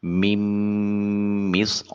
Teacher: صاد کی ادائیگی کے وقت منہ بھر کر آواز ہوگی۔ حرف جو ہے یہ مستعلیہ ہے، را کے اوپر زبر ہے، اس کو مفخم یعنی موٹا ادا کیا جائے گا۔